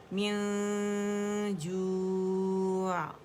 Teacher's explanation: اگر میں یہاں سٹاپ کرتی ہوں تو عین ساکن ہو جاتا ہے، اس کا توسط شو کریں گے